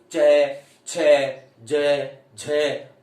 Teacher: हवा स्पर्श भी करती है और घर्षण भी करती है। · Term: स्पर्श संघर्षी